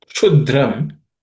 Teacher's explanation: The second line, kshudram, the kshu is with sh, which is cerebral.